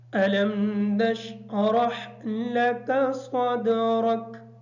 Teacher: عموماً یہ سننے میں آتا ہے کہ اس صورت میں علم نشرح لکا، لکا کا جو کاف ہے اس کو موٹا پڑھ دیا جاتا ہے، جبکہ یہ کاف باریک ہے